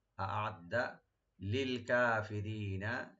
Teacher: ইন্নাল্লাহা, আ'আদ্দা, আ'আদ্দা, হামজাকে রাইট দিবেন, আইনটাকে রাইট দিবেন। আ'আদ্দা, দালে কোনো টান হবে না, শুধু ডাবল করে পড়বেন। আ'আদ্দা লিল কাফিরিনা, লিল কাফিরিনা, কাফ ওপেন থাকবে, রি একটা টানবেন, নুনে লাস্টে কোনো টান হবে না।